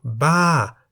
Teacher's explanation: Ba, meaning crazy, is in the falling tone